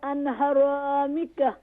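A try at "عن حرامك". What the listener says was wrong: عن حرامک, no an. عن عین pronounce properly.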